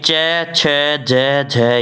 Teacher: तालवे से दोस्तों होते हैं आपके च, छ, ज, झ